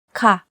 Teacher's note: the second tone and spelling of the word which is ka with falling tone this is the most general and basic form of the word